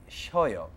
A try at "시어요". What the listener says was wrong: It's not 시워요, it's 시어요.